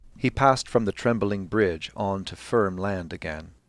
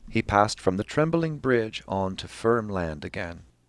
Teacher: a user simply draws the pitch that they want over trembling here we have a higher pitch corresponding to an emphasis